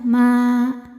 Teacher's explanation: Kalau berhenti dua panjangnya Ma namun jika diwasalkan mimnya Jadi pendek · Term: Mad Thobi'i zahiri